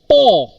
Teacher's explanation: See air is blocked when we brought two lips together. Air is blocked in the mouth cavity and then immediately when we open the lips air comes out that time closive sound P is produced. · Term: plosive sound